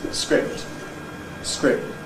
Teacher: you don’t usually hear the noise of the release of the first plosive · you can’t really hear the release of the /k/ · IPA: [skrɪp̚t], [tæk̚t]